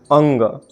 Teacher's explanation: कंठ से तो इसका उच्चारण होता ही है, साथ साथ नाक से भी होता है। कंठ और नाक दोनों से।